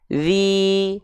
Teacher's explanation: huruf dalal huruf tipis tanpa pangkal lidah